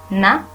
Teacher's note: It happens by lowering the velum so that the airstream goes through the nasal cavity only. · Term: nasals